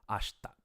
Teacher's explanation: So in the same way, the vowel sound ashita, the e kind of disappears as you're speaking quickly, and it just becomes ashta. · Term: de-voicing, devoicing